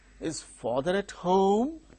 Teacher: a question yes no question which begins with a helping verb the tone used is rising tone the intonation here is rising tone so this father at home